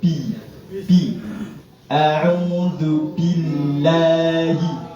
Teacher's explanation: Bi niku di kedua bibir ditempelkan, dirapatkan.